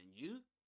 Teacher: we stress the you at the end because we're interested in the other person now.